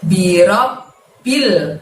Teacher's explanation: Ditahan dan ditekan, robnya ditahan dan ditekan ke bunyi B-nya di situ